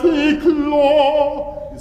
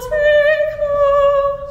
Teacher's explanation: And the all vowel, of course, you know, it's a dark vowel and it wants to sag, so you really have to keep forward there too.